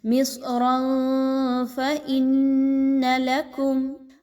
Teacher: اخفا کیسے ہے کہ را پر جو 2 زبر کی تنوین کی آواز ہے اس کو آپ نے چھپانا ہے، کلیئر نہیں پڑھنا اور غنہ بھی کرنا ہے۔ مصرا فإن لکم، حمزہ اور نون کو آپس میں ملا کے نون مشدد کا غنہ کیجئے۔ · حمزہ اور نون کو آپس میں ملا کے نون مشدد کا غنہ کیجئے۔ لکم، یہاں پہ دیکھیں تو میم ساکن کے بعد میم کا حرف آ رہا ہے، یہاں پر غنہ کیے بغیر نہیں پڑھا جائے گا بلکہ اچھے سے آواز کو ناک میں لے کے جائیے۔